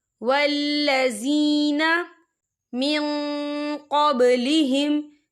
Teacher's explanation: یا مدہ ہو رہا ہے، یا ساکن سے پہلے زیر ہے، تو ہم اسے 2 یا 3 حرکت کے برابر کھینچے پڑھیں گے